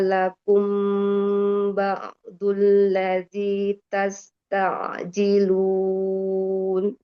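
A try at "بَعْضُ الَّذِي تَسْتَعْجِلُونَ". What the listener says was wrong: Antara ba'du sama ta'ji beda tuh Mi. pengennya sama seperti yang belakang, yang tasta'ji. Karena yang di ba'du Umi terlalu iya, terlalu cepat. Tawasudnya masih agak kurang.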